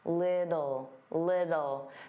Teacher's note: native speakers, including me, generally pronounce the T's as soft D's.